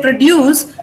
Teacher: When you say produce, you're stressing dues. That is the second syllable. So then it becomes a verb.